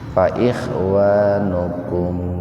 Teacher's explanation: Waqaf jaiz ya. Kalau berhenti berarti mimnya dibaca idhar tapi sepintas saja.